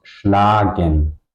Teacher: The A is long because it's at the end of the syllable.